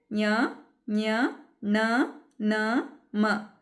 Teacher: ಇವುಗಳನ್ನ ನಾವು ಮೂಗಿನ ಸಹಾಯದಿಂದ ಉಚ್ಚರಿಸ್ತೀವಿ ಮಕ್ಕಳೇ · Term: ಅನುನಾಸಿಕ ಅಕ್ಷರಗಳು